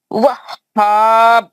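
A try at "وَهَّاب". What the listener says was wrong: نہیں ہوا خلخلہ, آپ روک دے رہے ہیں آواز کو.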